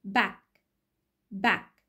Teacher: back unreleased، هنا الهوا ما خرجش تاني مع الك sound